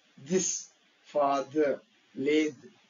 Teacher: Tongue teeth మధ్య tongue teeth మధ్యలో ఉండాలి. సో మనం ఎయిర్ పుష్ చేసినప్పుడు అది వైబ్రేట్, వోకల్ కార్డ్స్ వైబ్రేట్ కావాలి.